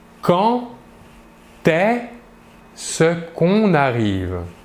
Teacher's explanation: Le verbe commence par un E. Le D ici, pour la liaison, va se prononcer comme un T, comme si c'était un T, mais on l'écrit D.